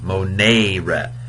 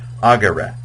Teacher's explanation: So the second conjugation is the long E, monere. The third conjugation, however, is a short E, agere. It's a wimpy E, a short E.